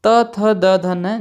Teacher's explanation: जब आप बोलते हैं तो आपकी जीभ दांत से टकराती है तो ये दंत अक्षर हो गए।